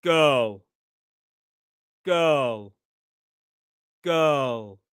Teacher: The dark L, the back of the tongue rises.